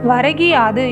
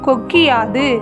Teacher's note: முதல் சொல்லின் இறுதியில் உள்ள கு என்னும் எழுத்து கி என்று ஒலிக்கிறது. அதுவும் முழுமையாக ஒரு மாத்திரை அளவில் ஒலிக்காமல் அரை மாத்திரை அளவாக குறைந்து ஒலிக்கிறது. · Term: குற்றியல் இகரம்